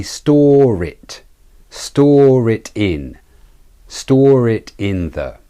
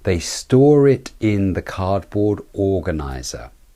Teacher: In this sentence, there is an example of using a linking er. The er is not usually said in the word store in British English. Here it is said, and it links the I in the word it. You say store it in, store it in the.